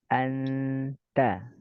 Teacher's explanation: Suara yang sama itu adalah nun sukunnya ya. Nun sukunnya samar ke huruf setelahnya. Misalnya kalau ta berarti ta, anta. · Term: ikhfa